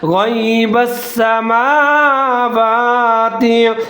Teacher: मीम और वाव दोनों के ऊपर खड़ा ज़बर है, एक अलफ के बराबर, दोनों को लंबा करेंगे